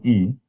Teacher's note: that sound is high and front high front and then tense and then unrounded